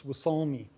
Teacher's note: the word is stressed on its second syllable